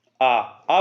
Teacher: जैसे आ बोलते ही जीभ पीछे चली गई, पश्च हो गया